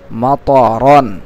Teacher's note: দুই জবর রন মাতরন মাতরন মাতারা তা যেন না হয় এটা ত মোটা করে সুন্দর করে উচ্চারণ করবেন